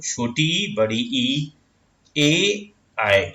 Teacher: जिन स्वरों का उच्चारण जीभ के अग्रभाग के सहयोग से होता है उन्हें हम अग्र स्वर कहते हैं। देखो छोटी ई, बड़ी ई, ए, आए, ये बोल के देखना, अग्र जीभ का अगला हिस्सा जो है ना काम करेगा उस पे, ठीक है।